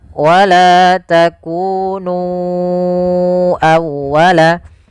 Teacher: Kemudian pada lafal nu awwalaka, ya di sini sama hukumnya dengan lafal bima anzaltu, yaitu adanya mad jaiz munfasil. Maka kita harus memanjangkan nu-nya sepanjang 4 atau 5 harakat.